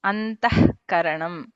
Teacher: And visarga followed by kakara or kha, alpaprana or mahaprana, ha is heard.